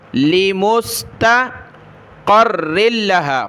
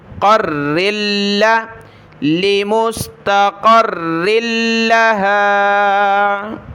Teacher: قاف کو را کے ساتھ، را کو لام کے ساتھ ملایا، را اور لام دونوں کے اوپر تشدید ہے تو اس کو جمع کر سختی کے ساتھ پڑھنا ہے۔ قاف را زبر قر، را لام دو زیر رل، لام زبر لا، قر رل، لمستقر لها۔